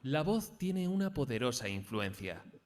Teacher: no hay algo escuchar básicamente para intentar conseguir modificar esa monotonía vamos a intentar comenzar la frase en un tono agudo y acabar en grave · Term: entonación